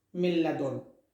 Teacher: Milladun is without gunna, without pulling, without nasal passage. And the second with gunna.